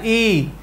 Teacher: ई में बदल जाता है क्यों क्योंकि दीर्घ ई में हमने पढ़ा है कि ह्रस्व स्वर से दो गुना समय लगता है तो इ को हमने लंबा उच्चारण कर दिया ई तो ई